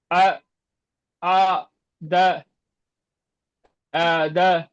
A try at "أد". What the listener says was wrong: அ அலிஃப் சவுண்ட் வரல. அஆத. ஆ அல்ல ஆ ஆ அ ஆ அ ஆ. அஆத. அஆத வல்ல. அஆத. அ அ ஆ அல்ல.